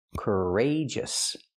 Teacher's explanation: We see the stress is on the second syllable, rage.